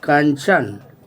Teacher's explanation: अंग को अनुस्वार कहा जाता है जिसका उच्चारण नाक से होता है